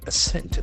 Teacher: The accent falls on the second syllable.